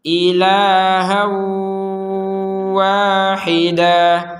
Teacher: Nah, di sini ada tanwin fathatain bertemu wawu, maka kita memasukkan fathatain ini ke wawu sehingga membacanya ilahan wahida.